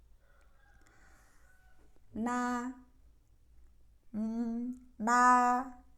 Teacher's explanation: ujung lidah tempelkan di gusi atas dan nanti suara juga keluar dari hidung sebagiannya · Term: huruf nun